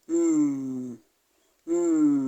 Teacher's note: is a nasal sound so m is a nasal sound and it's also a bilabial sound the two lips are coming together to produce M so it is a bilabial nasal